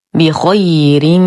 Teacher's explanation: نتم كسرة الباء، نفخم الخاء بعدها يا ساكنة فهو حرف لين